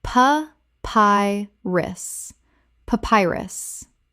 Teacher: Pa-pi-rus. Three syllables with the stress on the second.